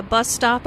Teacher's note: Bus stop is a compound noun with the main stress on the first word.